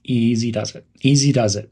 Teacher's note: Soften the word it to sound like it. Emphasize the word easy to create a calm tone. Easy does it.